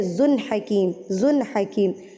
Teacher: تو یہاں پر ہم نے زا کو ظاہر تنوین کو ظاہر کر کے پڑھنا ہے کہ یہ 2 پیش ہے، ذن حکیم، ذن حکیم، ذن نہیں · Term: اظہار